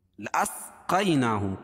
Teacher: یا ساکن سے پہلے قاف کے اوپر زبر ہے تو یا لین، اس کو نرم آواز کے ساتھ جلدی ادا کریں گے، اور کھڑا زبر قائم مقام الف مدہ کے اس کو ایک الف کے برابر کھینچ کے پڑھیں گے۔